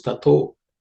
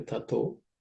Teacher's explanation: Tataha, the visarga, becomes o.